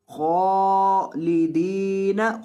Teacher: خا کو لمبا کریں گے اور موٹا کریں گے.